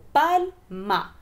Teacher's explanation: Es una palabra que no tiene tilde, pero la sílaba tónica se resalta porque la mayor fuerza de la voz está en pal